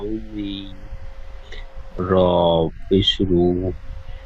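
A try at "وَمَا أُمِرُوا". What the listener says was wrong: র উপে শুরু আরো বেশি করে টান হবে। ওয়ামা উমিরু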